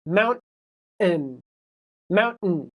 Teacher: So, if the t is in the middle or the end, it often does not go t. So, in the word mountain, you can't hear a t, right? There's no t sound. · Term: stop